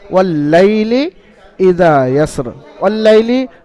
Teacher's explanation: লাইল শব্দটা হলো আপনার লিনের কায়দা, নরম আওয়াজে তাড়াতাড়ি পড়বেন। আর ওয়াল-লাইলি পর্যন্ত, ওয়াল-লাইলি ই অর্থাৎ এই হামজার নিচে জের, এটা হারাকাত, এই পর্যন্ত হারাকাতের কায়দা।